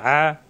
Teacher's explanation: আইন যাবার আ কণ্ঠনালীতে চাপ দিয়ে